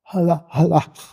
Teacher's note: Da ist ein wirklich ein stimmloser Frikativ zu haben.